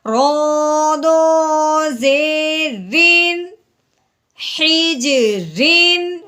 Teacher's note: بغیر غنے کے ہم نے تنوین کو پڑھنا ہے اظہار کے ساتھ